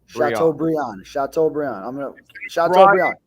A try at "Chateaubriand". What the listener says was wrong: Instead of Brian, it's pronounced Briand. so Chateaubriand. House Brian, Chateaubriand.